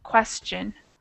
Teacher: The T is pronounced more like a CH. Question. So it's not it's not question.